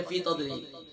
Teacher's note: ता के बाद दौद है, दौद फुल माउथ है, अक्सर इसे पढ़ते हैं तजलील, या तो जा के मुशाबे कर देते हैं या फिर दाल के मुशाबे कर देते हैं।